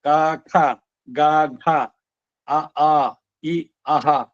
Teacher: ಇದಿಷ್ಟು ಕಂಠ್ಯ ಕಂಠದಿಂದ ಬರೋದು